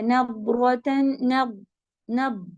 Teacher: اس کو نضرۃ دال نہیں پڑھنا ہے اور ہیوی کریں گے اور ٹائم لے گا